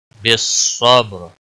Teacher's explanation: رکنے کی صورت میں را موٹی پڑی جائے گی